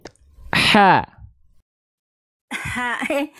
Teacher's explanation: Rasakan ada bisikannya dulu keluar. Baru keluar vokal a i u-nya. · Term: hak kecil